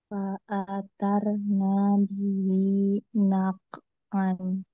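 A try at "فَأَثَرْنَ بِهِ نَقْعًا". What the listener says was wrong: Nanya kepanjangan, coba lagi.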